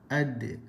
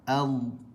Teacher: Tak boleh pantul huruf dad sebab huruf dad bukan bersifat qalqalah. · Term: rakhawah